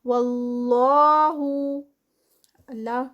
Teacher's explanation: اللہ سے پہلے زبر، اور یہاں پر اللہ کا نام جو ہے وہ ہیوی ہوگا